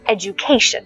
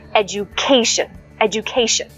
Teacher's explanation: word education I'm going to emphasize the third syllable education and when I emphasize the third syllable you'll notice that the tone raises